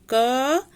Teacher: क को जब हम पढ़ते हैं हम थोड़ा सा इसको खींच के पढ़ेंगे क, तो क में अ की ध्वनि आ रही है, तो क में अ स्वर लगा हुआ है।